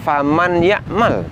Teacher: tertulis faman yamal lalu Nun sukunnya dimasukkan ke huruf ya makanya bunyinya tidak lagi Nun tapi bunyi huruf ya namun walaupun bunyinya huruf ya bunyi ya di sini sertai dengung yang ada di Pangkal hidung kita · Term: idgham bighhunah